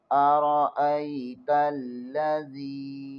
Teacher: زال زیر کے آگے یائی مدہ ہے، اسے ایک الف کے برابر کھینچیں گے